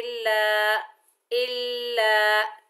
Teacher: لام کے اوپر زبر، آگے الف خالی ہے، یہ الف مدہ ہے، ایک الف کی مقدار کھینچ کر پڑھیں گے